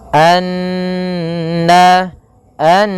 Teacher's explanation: kita menahan suara n ya sepanjang dua harakat baru dilepaskan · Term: gunah, gunnah